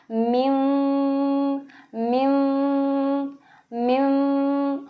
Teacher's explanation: इसमें पूरे होंठों को मिलाएंगे नहीं, जैसे मिम इस तरह से नहीं करेंगे होंठों को, बल्कि हम इसको पढ़ेंगे मिम मिम मिम। होंठ बहुत करीब लेके आएंगे, थोड़ा वाइब्रेशन से भी हमें फील होती है। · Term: इक़लाब